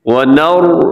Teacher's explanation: را موٹا پڑا جائے گا, باقی جو حروف ہیں وہ سب کے سب باریک ہیں. واو بھی, نون بھی, جیم بھی, واو آخر میں وہ بھی, آخر میں الف نہیں پڑا جائے گا.